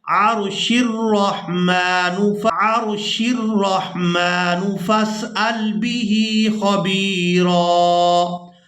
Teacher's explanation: پر وقف نہیں کرتے تو پھر ہم نے اس حمزۃ الوصل کو گرا دینا ہے، شین کو ہم نے را کے ساتھ ملا کر ادا کرنا ہے